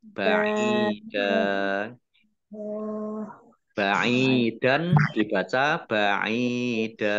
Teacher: Ain kasroh, ya sukun, mat tobi'i, dal fathah tanwin alif, karena wakof dibaca fathah dan panjang 2 harokat. Namanya mat iwad.